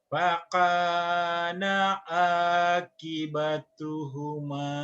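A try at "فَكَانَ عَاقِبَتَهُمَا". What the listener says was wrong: Kibata bukan kibatu, kibatahuma. Tanya pendek. Kibatahuma.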